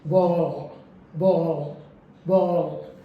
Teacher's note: इसमें हमें ध्यान रखना है कि टंग टिप को रिलीज नहीं करना है और बैक ऑफ द टंग को रेज करेंगे टुवर्ड द सॉफ्ट पैलेट। ये हमारी दो अगर कैरेक्टरिस्टिक्स पूरी होती हैं तो जो साउंड है वो डार्क ले है।